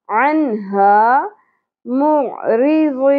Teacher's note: عن اظہار ہوگا، ہا عنہا معرضین. عین وسط حلق سے ادا ہوگا. ری را باریک ہوگی.